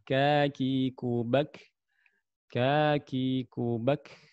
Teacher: pangkal lidah bertemu dengan langit-langit lunak dengan langit-langit keras pertengahan. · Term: huruf kaf